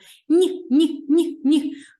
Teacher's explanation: звертаю вашу увагу на м'який подовжений приголосний звук ні ні ні ні букви дві а звуку один під час